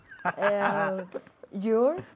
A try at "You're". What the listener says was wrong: Yo, no you. Yo. Una sola sílaba, ¿ok?